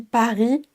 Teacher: Et la deuxième subtilité, c'est que le R final ne se prononce pas comme un R à la française. Donc quand on dit Paris, on a un R assez franc.